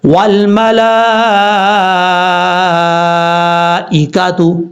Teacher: 3 الف کے برابر آپ نے اس کو لمبا کرنا ہے. یہاں پر اسی لفظ کے اندر حرف مد ہے، کھڑا زبر آگے حمزہ، تو یہاں پر لمبا کر کے پڑھیں گے، اس مد کو مد متصل کہا جائے گا.